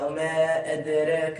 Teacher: عندنا القلقلة حيت الدال مسكونة والدال من حروف القلقلة